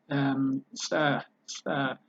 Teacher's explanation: you create it right next to your front upper teeth behind your upper front teeth, but you create it a little bit backward to the center of your palate, upper palate.